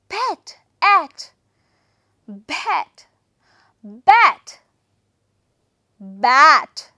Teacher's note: That is a prolonged one, bat. This is near open front, unrounded vowel sound.